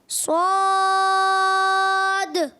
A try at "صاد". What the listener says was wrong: اور موٹا کر کے سو، اس کا الف بھی موٹا کر دیں. صاد.